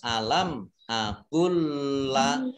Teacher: lam sukun bertemu dengan huruf lam, ini disebut idgham mutamasilain